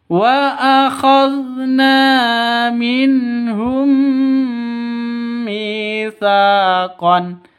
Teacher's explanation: Mim mati bertemu dengan mim, bacanya idgham mimi, masuk ke mim yang kedua, terus didengungkan.